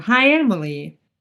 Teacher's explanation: that's a statement, and your pitch goes down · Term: falling intonation